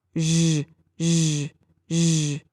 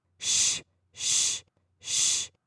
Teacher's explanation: Same position in the mouth, but the zh sound, like the end of the word judge, is a voiced, and sh, as in should, is unvoiced.